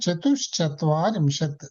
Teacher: అన్నమాట ఆ చతు చత్వారింతి చతుహు చతుహు చత్వారింశత్ విసర్గ శకారం అయింది చతుశచత్వ విసర్గ శకారం అవుతుంది శకారం అవుతుంది అందుచేత చతుశ్చత్వారింశత్ అయింది